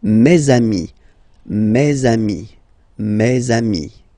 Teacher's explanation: let's be purist and make this beautiful liaison between these two words